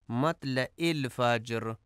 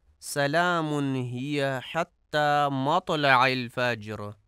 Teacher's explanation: مطلع میں عین کو حمزہ پڑھا جاتا ہے، عین کی ادائیگی درست نہیں کی جاتی